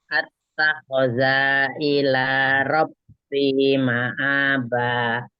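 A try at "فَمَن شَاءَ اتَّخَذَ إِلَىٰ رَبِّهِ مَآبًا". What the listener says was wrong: Attakhadhanya za-nya nggak boleh panjang, langsung. Attakhadha ila rabbihi Q-nya panjang yang rabbihi. Ma'aba.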